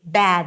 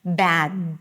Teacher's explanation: you want to bring the tip of the tongue up and to block the air completely